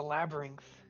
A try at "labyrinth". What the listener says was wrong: You say the word labyrinth wrong. There's no G in labyrinth.